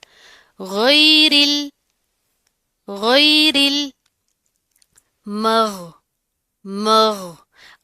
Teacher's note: غین کو پروپر ادا کریں گے، آواز جاری رہے گی، موٹا پڑھیں گے. ٹھیک ہے، جھٹکا نہیں دینا آپ نے.